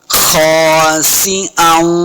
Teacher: खौ को भी पुर पढ़ना है, मोटा पढ़ना है। आगे अलिफ है, इसको दो हरकत लम्हा करेंगे।